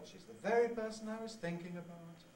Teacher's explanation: we have a different kind of drop just a little bit a step down to a level